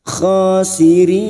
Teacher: kha alif kecil di atas 2 harakat.